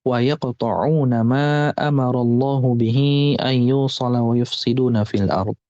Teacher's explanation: ma di situ harus dibaca mad jaiz munfasil 4 sampai 5 harokat. Bihi itu juga sama, harus dibaca 4 sampai 5 harokat.